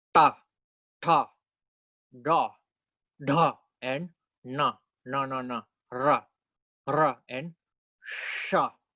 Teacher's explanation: you use the tip of your tongue and you let it touch the exact middle of the roof of your mouth, the hard palate. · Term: retroflex consonants